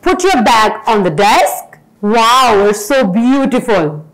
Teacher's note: We use falling intonation in commands or in exclamations.